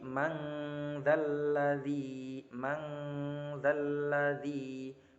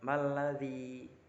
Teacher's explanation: dengan menyamarkan suara non sukunnya, tidak sejelas izhar tapi juga tidak selebur idgham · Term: ikhfa